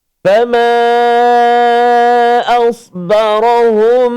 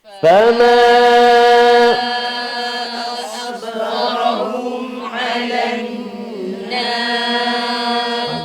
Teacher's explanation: Mim mati bertemu dengan ain. Iaitulah nama dia izhar syafawi dan cara bacaannya ialah jelas tanpa dengung. Jelaskan kat situ, jangan dengung.